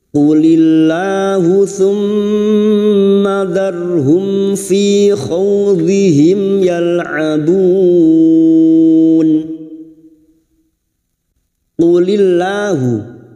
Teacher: lam jalalah yang didahului kasrah kita baca tarkik